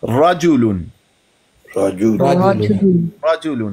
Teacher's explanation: मुफ़ख़म का मतलब होता है मुंह भर के पढ़ना, राजुलुन, राजुलुन। रा को पढ़ते हैं ना तो इसमें थोड़ी सी ना तकरीर भी आती है, ऐसे तो वो बहुत ज्यादा ना हो लेकिन थोड़ी सी फिर भी होती है।